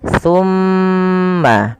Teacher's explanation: Pada lafal thumma tahan dulu huruf mimnya karena di sini mim berharakat tasydid, maka tahan suara nya 2 harokat. Thumma.